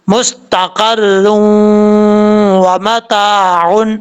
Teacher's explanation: جب ہم واو کو دوسرے حرف میں داخل کریں گے یا را کو واو کے اندر داخل کریں گے تو کیا ہوگا؟ ادغام ہوگا اور غنہ بھی ہوگا ایک الف کی مقدار